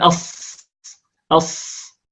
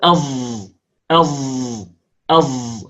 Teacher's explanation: فالصاد التي كالزاي عبارة عن أننا ننطق الصاد ونشربها صوت الجهر الذي في الزاي، لأن الصاد مهموسة. أص، ضع يدك على مكان الوترين الصوتيين لن تجد اهتزازا عندما تنطق الصاد، أو أغلق أذنيك براحتي يديك لن تجد صدى يملأ تجاويف رأسك.